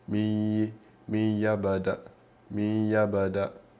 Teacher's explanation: Quindi abbiamo la ghunna, fa mi, si inizia il suono, la ghunna, il suono nasale, e però voi sentite anche la ya, non è un min chiaro, ma c'è la ghunna che proprio strozza questo nun, che non lo facciamo neanche sentire, che non lo fa sentire, quindi fusione, come potete vedere è scritto fusione, quindi fonde il nun qua tramite l'idgham con la ya.